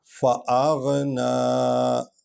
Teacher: فا جو ہے یہ حرف شفوی ہے، ہونٹوں سے نکلتا ہے